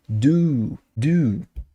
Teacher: U, com a boca circular. Prolongado, inclusive